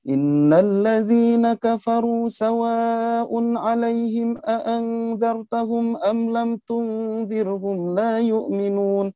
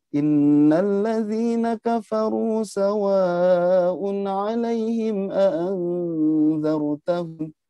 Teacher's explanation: Maka harus ada penggabungan nada, depannya naik, ujung datar.